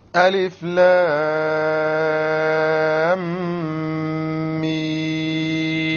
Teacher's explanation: The lam, six harakas. The meem, six harakas. And in between the two, ghunna of two harakas.